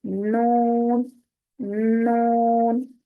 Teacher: नून जो है वो सिर्फ सामने वाले 6 दांतों को लग रहे, उसके मसूड़ों को लग रहा है, जुबान का अगला हिस्सा